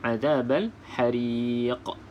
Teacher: jadi lantunan qalqalah kubra ni sedikit kuatlah berbanding qalqalah sughra iaitu huruf qalqalah yang berada di pertengahan kalimah